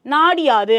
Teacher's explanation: இந்த உகரம் இகரமாக திரிந்து தன் மாத்திரை அளவுல இருந்து குறைஞ்சு ஒலிக்கும்